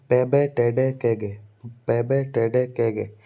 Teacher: Completely block कर देते हैं एयर फ्लो को, है ना, फिर उसको एक सुनने योग्य धमाके के साथ सुनते हैं। जैसे पहले तो 6 होते हैं प्लोजिव, पे बे टे डे के गे।